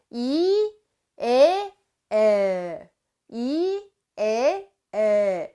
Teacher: 입이 점점 더 벌어지면서 혀는 아래로 쳐져. 혀는 아래로 내려간단 말이야.